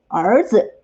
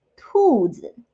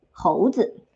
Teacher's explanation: words all end with 子, which is pronounced as a neutral tone